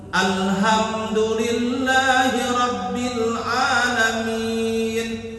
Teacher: kalau lam bukan huruf qalqalah berarti tidak boleh mantul